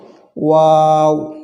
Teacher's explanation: যেমন ওয়াও, ওয়া, ঠোঁটটি একটু গোল হবে, ওয়াও, দুই ঠোঁট গোল করে ওয়াও উচ্চারিত হয়। আমরা এটি ঠোঁট গোল করলে এটির সঠিক উচ্চারণ হয়ে যাবে, ওয়াও।